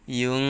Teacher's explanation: নুন সাকিনের পর ইকফার হরফ ফা আসছে, তাই গুন্নাহর সহিত গোপন করে পড়তে হবে।